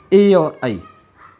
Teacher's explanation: कंठ के साथ में तालु जुड़ गया है, कंठ और तालु दोनों जगह से उच्चारित होने के कारण क्या कहलाया है? कंठ तालव्य